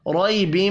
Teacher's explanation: را کو زبر کی وجہ سے پر پڑھنا ہے